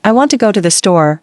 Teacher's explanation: For example, in I want to go to the store, want and store are stressed and the other words are said quickly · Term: sentence stress, Sentence stress